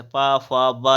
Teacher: पा वर्ग, ये बोला जाता है होंठ से, पा, फा, बा, ये सब में उसमें ओंठ, उच्चारण स्थान क्या हो जाएगा, ओंठ, होस्ट। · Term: ओष्ठ